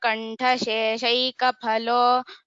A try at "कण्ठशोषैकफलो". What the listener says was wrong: kantha shoshaika not kantha sheshaika so that is the only mistake otherwise it was well recited dhanyavadah so next Nilima Nanduri